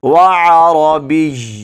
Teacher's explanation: یا کو بھی پڑھنا ہے اور تھوڑا سا جماؤ کے ساتھ پڑھنا ہے، کیونکہ یا پر شد ہے۔ وعربی ایسے، وعربی۔